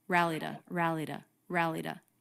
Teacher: we make a t a flap t when it comes between two vowels